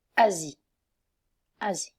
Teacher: But in the middle, if the S is between two vowels and it's one S, so you have to pronounce it like Z